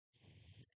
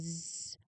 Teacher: the first one, the former one is voiceless and the latter one is the voiced and see your throat vibrates when you try to pronounce it.